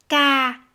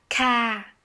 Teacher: le K en vietnamien n'est pas explosif donc en fait ça sonne plutôt ça raisonne plutôt dans la